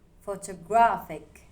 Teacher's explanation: The stress lands on gra.